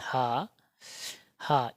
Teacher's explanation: काकल का मतलब होता है कंठ से उच्चारण हो हा का उच्चारण शुद्ध रूप से कंठ से होता है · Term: काकल व्यंजन